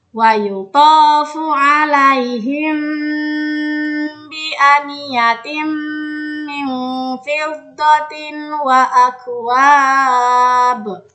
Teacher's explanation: posisi bibir ketika melafalkan ikhfa syafawi tidak tertutup rapat. Ini agar dapat menyamarkan huruf mim sukun disertai dengan gunnah atau dengungan.